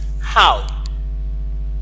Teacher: When you have this long R and the short who, when you do some addition, what you have is you only do away with the sign that denotes longativity, and you had the short u. So that means you go from ha to who. That makes how.